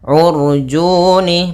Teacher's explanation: Kemudian kal, nah, sama kembali di sini alif lam qamariyah. Urjuni, pada lafal u ketemu ra sukun, maka di sini ra-nya ra tafkhim, ra tebal